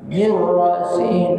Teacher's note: nun mati bertemu dengan ra idgham bila gunnah.